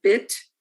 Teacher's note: bit, which is also high front like beat, but it's lax. So there's a little dotted line there.